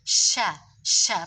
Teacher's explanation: Pengucapan huruf sya itu harus ada berhambur angin yang berhamburan di mulut. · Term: tafashi